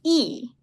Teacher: Tongue is in the high position. Frontal area, flat your lips, and high position, that would be E.